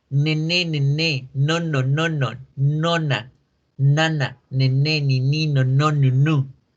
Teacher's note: es una consonante alveolar nasal porque cuando la lengua toca ya los alveolos al aire le toca por la nariz